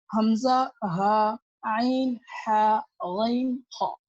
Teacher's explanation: ये 6 हरूफ हल्के कहलाते हैं क्योंकि ये हलक के हिस्से से अदा होते हैं।